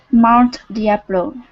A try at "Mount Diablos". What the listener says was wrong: Okay, with an S at the end. Mount Diablos. Z with an S. Mount Diablos.